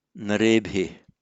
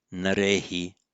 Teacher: That's with a lenition, a softening of the narebhi to narehi.